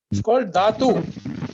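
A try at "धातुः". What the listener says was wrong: Dhatuhu. There is a visarga Mahodaya, so you have to spell it as dhatuhu.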